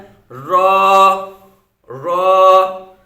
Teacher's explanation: ये जुबान की नोक और मुकाबिल के तालू से अदा होता है